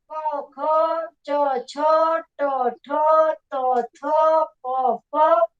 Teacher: નાદ તંત્રીઓનો કંપ ઓછો હોય છે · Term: અઘોષ વ્યંજન